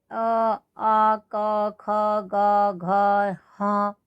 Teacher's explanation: इसमें गले की ध्वनि निकलेगी। ठीक है ना, कंठ के अंदर से।